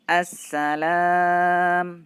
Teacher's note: Jadi alnya tidak kita baca al salam, tidak, tapi langsung ke sinnya. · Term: idgham syamsiyah